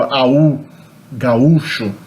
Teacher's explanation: There's a hiatus there, not an ow diphthong